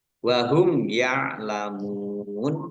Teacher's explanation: sukun juga Mad thii masing-masing dibaca panjang dua harakat wahum yalamun mim sukun bertemu dengan huruf ya bacaan izhar syafawi dibaca jelas